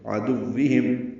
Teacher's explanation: عدوہم، دال کو واو سے ملائیں گے، معروف طریقے سے وہ پڑھیں گے. ہم میں میم ساکن پہ اظہار شفوی ہے